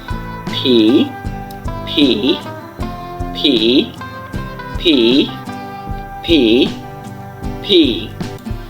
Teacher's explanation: দুই ঠোঁটকে একসাথে করে ভি বলে আপনি হচ্ছে যে মুখ থেকে বাতাস বের করবেন